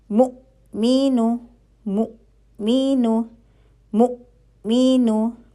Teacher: तो ये हमजा पे हम झटका देंगे। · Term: हमजा साकिन